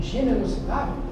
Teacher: Aqui, generosidade, a sílaba forte é a penúltima. Então eu sei que generosidade é uma palavra proxípera, porque a sílaba forte está na penúltima sílaba.